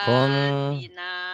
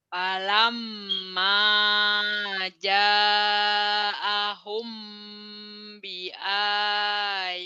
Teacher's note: Mim mati ketemu ba itu agak bindeng. Kayak Mmm, bilang ember, mhm, ember gitu. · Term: ipas sapawi